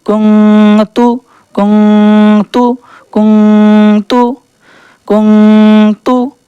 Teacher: अब यहाँ पर भी नून साकिन आ गया है, तो यहाँ पर भी क्योंकि ता पहला वाला है हर्फ इक्फ़ा में से, तो यहाँ पर इक्फ़ा करेंगे यानी नून को छिपाएंगे। काफ नून पेश कुंग, ता पेश तू, कुंग तू कुंग तू कुंग तू कुंग तू।